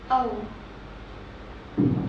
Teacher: you start your mouth wide not too wide and your muscles are relaxed and then you round your mouth as you finish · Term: the o sound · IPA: /əʊ/